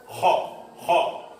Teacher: dipaskan di makhrajnya kho, tenggorokan yang paling atas.